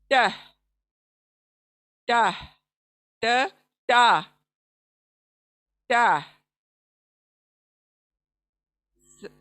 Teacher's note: ट ये कैसे अदा होता है, जबान की जो नोक है सामने की, ये जाकर ऊपर के हमारे जो बड़े दांत हैं सामने के, उसके जड़ को लगता है।